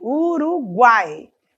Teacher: Então temos uma semivogal u temos uma vogal a e temos uma semivogal I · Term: tritongo